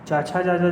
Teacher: च छ ज होता है वो तालु का होता है